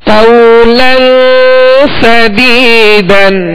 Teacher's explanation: لام پر دو زبر کی تنوین ہے، آگے سین ہے، سین حروف اخفاء میں سے ہے، لہذا یہاں پر غنہ کر کے پڑھیں گے